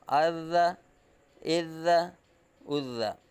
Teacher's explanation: ذال حروف لثویہ میں سے ہے، نرمی سے اس کی آواز نکلے گی، باریک پڑھا جائے گا